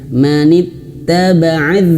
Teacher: Ingat huruf dzal dia mengalir suara. Jadi dia kalau dia sukun, kalau dia tasydid, nah di sini ada dia tasydid, kondisinya dia tasydid, maka harus mengalir suara.